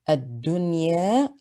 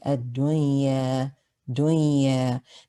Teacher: So we don't merge the noon into the ya. Instead, we make the noon clear. If you merge it into the ya, it will be lost and we will not know what the word is.